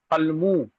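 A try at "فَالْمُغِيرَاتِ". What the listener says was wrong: হ্যাঁ, তা মু টান হয়ে যাচ্ছে কেন? মু টান দিচ্ছেন কেন? কি টান দিয়ে বলেন।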